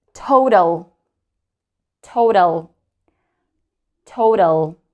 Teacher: And in these cases, we can see there are two vowels, and one of my previous lessons, I mentioned we drop the second vowel, we don't drop, we don't pronounce, right? The second vowel is silent, and we make the first vowel long. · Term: long O